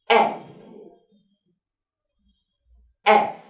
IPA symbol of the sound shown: e